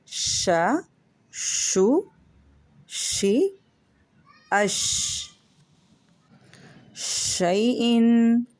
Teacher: शीन का मखरज जुबान का दरमियान जब ऊपर के तालू से लगे तो इससे शीन अदा होता है।